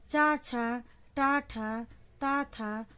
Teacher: अघोष, जिन व्यंजनों का उच्चारण करते समय फेफड़ों से निकलने वाली वायु स्वर तंत्री से घर्षण करके नहीं निकलती, उन्हें अघोष व्यंजन कहते हैं।